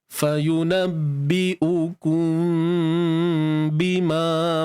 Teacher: Mim mati jumpa ba. Ikhfa syafawi. Sembunyi kan? Tutup bibir bersahaja.